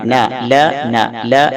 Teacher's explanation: നാവിൻറെ തലഭാഗം അതിനോട് നേരിടുന്ന മേലെ മുൻപല്ലുകളുടെ മോണ അതുമായി ചേർത്തുകൊണ്ടാണ് നമ്മൾ നൂന് പറയുന്നത് ലാമിന്റെ കുറച്ചു താഴെയായിട്ട് നൂന് പറയാൻ എളുപ്പമാണ് അതിൻറെ സിഫത്തുകൾ ഒന്ന് ജഹ്റ അതായത് · ലാമിന്റെ കുറച്ചു താഴെയായിട്ട് നൂന് പറയാൻ എളുപ്പമാണ് അതിൻറെ സിഫത്തുകൾ ഒന്ന് ജഹ്റ അതായത് ന എന്ന് പറയുമ്പോൾ തീരെ ശ്വാസം പുറത്തേക്ക് പോകുന്നില്ല അതുപോലെ മറ്റൊരു വിശേഷണം തവസ്സുത്ത് ശബ്ദം നീളുന്നുണ്ട് പക്ഷേ ചെറുതായിട്ട് മാത്രമേ നീളുന്നു തീരെ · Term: നൂൻ